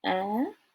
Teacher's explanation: Your voice goes up, almost like you're screaming.